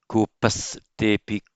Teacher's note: this should be a s, not a visarga, because it's immediately followed by a te.